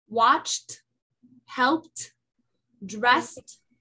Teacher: it takes the T if it's unvoiced like uh like f like K like P like s ch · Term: the T sound, T sound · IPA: /t/